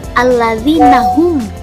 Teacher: mim matiin bertemu dengan huruf ini juga sama yaitu izhar syafawi jadi mimnya itu dibacanya terdengar jelas tanpa ada samar atau menunggu